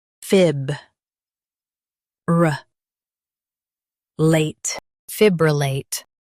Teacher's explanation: Stress fib and keep ruh light. The late is clear.